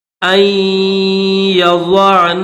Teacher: اس نون کے اوپر صرف غنہ کر کے یا کے ساتھ ملائیں گے